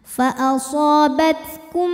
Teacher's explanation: mim pertama dimasukkan ke mim kedua disertai bunyi dengungan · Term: idgham mimi